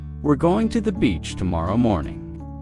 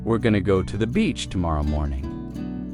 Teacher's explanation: Going to often becomes gonna in casual speech.